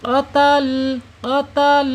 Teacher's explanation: lam ini menurut makhraj ada di alisan yaitu ujung tepi lidah kita ya menyentuh langit-langit yang depan ya. hampir menyentuh ya mengenai pangkal gigi seri. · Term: lam yang sukun